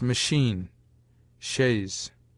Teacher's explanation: CH, in some French words not yet assimilated, sounds like SH